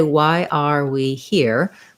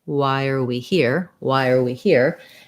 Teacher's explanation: at one of our main reductions which is that the the word are is often reduced to just an er sound because it's usually unstressed and unimportant